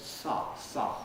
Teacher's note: They're actually probably pharyngalized. So along with the S, the pharynx is constricted at the same time.